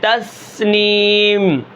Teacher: اب یہاں پر دیکھیں توصلا، فعززنا، اور سین کے اندر ویسے بھی سیٹی زیادہ ہوتی ہے